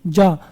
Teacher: तो आपकी जीभ कहाँ लग रही है, ऊपर, तालु पर लग रही है। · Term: तालव्य